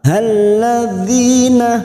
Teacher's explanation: dhi kasrah bertemu ya sukun mat tabi'i, 2 harokat kita panjangkan.